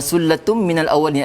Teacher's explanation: Tu tanwin bertemu dengan mim, maka bacaannya ialah dengung. Dengung, gunnah.